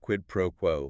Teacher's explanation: quid pro quo, like QUED pro QUO. Stress on the first and last words.